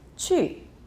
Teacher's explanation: It goes from the highest to the lowest point. 去. You can sometimes say it lower. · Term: 4th tone